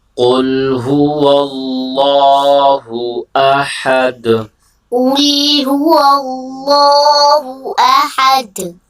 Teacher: اس میں دیکھیں سب سے پہلے آپ نے اس چیز کا خیال رکھنا ہے، یہاں پر قوف موٹا ہے، اور دوسرا آپ نے یہ خیال رکھنا ہے یہاں پر اللہ کا نام موٹا کر کے پڑھیں گے، اور آخر میں دال ہے اور دال حروف قلقلہ میں سے ہے، لہٰذا یہاں پر قلقلہ کریں گے، یعنی آواز کو ڈبل آئے گی یہاں پر آواز.